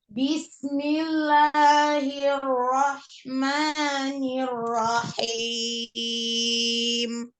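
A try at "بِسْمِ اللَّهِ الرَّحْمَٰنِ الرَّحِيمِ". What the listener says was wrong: Jangan mengayun harokat pada huruf ba. Bismi, langsung masuk. Jangan bismi, enggak, la.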